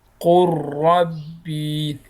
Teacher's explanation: لام او را دا دواړه یو بل سره قریب المخرج دي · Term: ادغام متقاربین